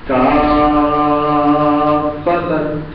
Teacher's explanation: کافتن اس کی جو ترکیب ہے اجزاء کی وہ کیا ہے کاف فتن. کاف فتن, پہلا جو کاف ہے اس کا فا ساکن ہے اور وہ ساکن ہی رہے گا, لہذا یہاں پر ہم مد لازم کریں گے, اس کو لمبا کریں گے